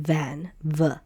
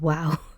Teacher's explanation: And, uh, it made a W sound, uh, like a W sound like in the English word wow, it made a W sound. Uh, but today in modern Hebrew, it makes the V sound as in van, v instead of W.